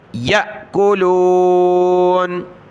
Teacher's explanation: حمزہ ساکنہ ہے جھٹکا دیا